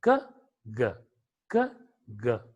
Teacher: K is a voiceless sound, whereas G is a voiced sound. When you try to produce K, the vibration in the vocal cords is not that considerable.